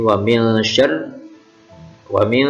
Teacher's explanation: nun sukun ketemu shin, bacaan ikhfa hakiki. Kemudian ra ini bertasydid syar, tidak boleh dibaca syari.